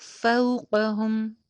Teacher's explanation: فوقاہم نہیں ہوگا، قاف کی زبر کو لمبا نہیں ہونے دینا